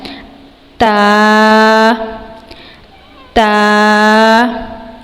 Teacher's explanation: اس حروف کو ہم نے زبان کی نوک اور اوپر والے دانتوں کے کنارے سے ادا کرنا ہے